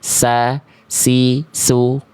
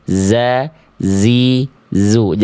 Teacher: Dia berdesis dengan mengalir suara yang disertai aliran udara atau nafas. · Kalau kita lafalkan huruf zai ini bocor nafasnya, nah ini udah beda huruf. Ini udah jadi huruf sin.